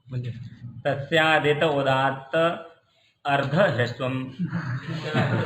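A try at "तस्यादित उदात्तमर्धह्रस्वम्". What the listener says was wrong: उदात्त अर्ध तो माँ कहाँ चला गया? हाँ ठीक, तस्यादित उदात्तम अर्धह्रस्वम ऐसा पढ़िए, या ऐसा पढ़िए या तस्यादित उदात्त मर्धरस्वम ऐसा पढ़िए।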